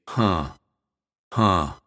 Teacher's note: it's always nasalized that means we say it through our nose we don't say h we say huh huh when we use